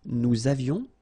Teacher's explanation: Nous avions, little liaison, final S not pronounced.